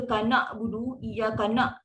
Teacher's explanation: Kalau baca kanak budu, kanak, dia dah jadi hamzah. Dia tak sempit, dia dah terbuka dah sangat.